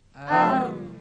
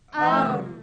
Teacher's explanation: Dalam huruf ra, melencong ke belakang hujung lidah. Dia melencong ke belakang lidah. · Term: sifat inhiraf